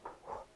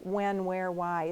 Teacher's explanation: the way we actually speak today, we usually pronounce it exactly the same as W, so we say w.